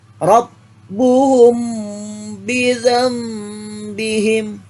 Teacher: kasabach sekarang espak syafawi apa jis Pak syafawi Ikhfa Syafawi adalah Bacaan yang dibaca secara samar akhirnya suara bacaannya berada di bibir